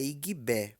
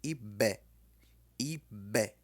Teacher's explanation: É aquele B que você coloca o lábio para dentro e deixa ele estourar para fora. Ibé. Põe o lábio inferior para dentro da boca e deixa ele sair quando você falar o B. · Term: B estourado